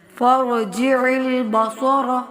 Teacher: عین کو وسط حلق سے ادا کرتے ہوئے صاد موٹا پڑھیں گے